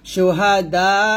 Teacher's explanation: এরকম ভাবে শুহাদা আ, থামলো হবে শুহাদা, দাতে আমরা 4 আলিফ টান দিব, 4 আলিফ টান দিয়ে তারপরে হামজাটাকে সাকিন ধরব, শুহাদা এরকম।